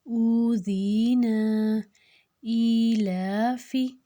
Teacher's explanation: ایلا کو ہم نے 2 حرکت لمبا کیا اور فی کو ہم نے نہیں لمبا کیا